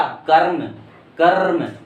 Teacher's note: तो रा पहले आ रहा है और हल्का सा रा उच्चारण हो रहा है, पूरा तो हो नहीं रहा है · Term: आधा रा